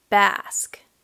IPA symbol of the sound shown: a